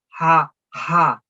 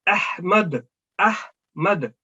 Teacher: اس کے مقابل پر یہ جو والا ہا ہے یہ درمیان حلق کے درمیان سے ادا ہوتا ہے، اور اس کو ادا کرتے وقت آپ کے منہ سے ہوا کا اخراج ہوتا ہے